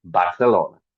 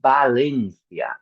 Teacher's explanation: in Spanish, unfortunately, we don't differentiate between the B and the V.